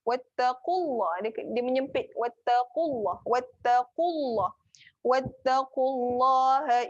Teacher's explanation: Wattaqu tebal. Wattaqu kena tekan dekat pangkal lidah. Belakang lidah tu.